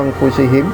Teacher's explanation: nun ketemu dengan huruf fa ya, maka disebut ikhfa hakiki. Ikhfa itu apa namanya, samar-samar ya, jadi memasukkan huruf nunnya itu kepada huruf fa